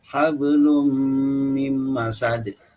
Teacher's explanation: Ya, kalau untuk mim, misalnya yatasaalun ya, hablum mim masad, itu huruf mimnya itu kedua bibir itu terkatup, menempel, tapi tidak terlalu ditekan.